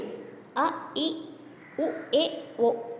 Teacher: இந்த 5த்துக்கும் குறுகிய ஒலி உடையது. ஸோ இதோட மாத்திரை அளவு 1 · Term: குறில் எழுத்துக்கள்